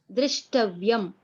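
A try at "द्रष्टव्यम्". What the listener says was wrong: Drashtavyam, not Drishtavyam. Dr and Dra, the difference.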